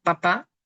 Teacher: se bloquea completamente el aire al momento de hablar. Y luego sí se libera.